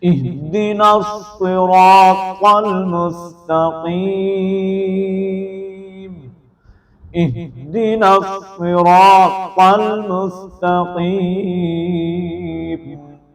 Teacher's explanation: را کو ہم نے پر پڑھنا ہے را کے اوپر زبر ہے